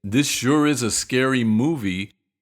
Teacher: Again, stressing sure and movie